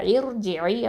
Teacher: அப்போது இர்ஜிஇ அப்படின்னு சொல்லணும், இர்ஜிஇ. ஓகே, இந்த இர்ஜிஇ அப்படின்னு சொல்லும்போது ரா வந்து தஃப்ஹீமாக தான் ஓதணும். சரியா? அந்த ரா சுக்குனுக்கு முன்னாடி ஹம்சத்துல் வசல் வந்து அதில் கெசரா வந்துருந்துச்சு அப்படின்னு சொன்னால் கண்டிப்பாக நம்ம அந்த ராவை தஃப்ஹீமா, அதாவது வல்லினமாக தான் ஓதணும்.